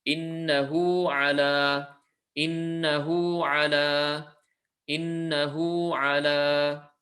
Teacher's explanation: Because there's no hamza, it stays as two lengths